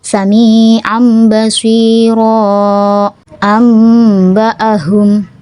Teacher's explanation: adalah nun sukun atau tanwin bertemu dengan huruf ba cara membacanya mengganti nun sukun dengan mim sukun dan disertai gunah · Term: iqlab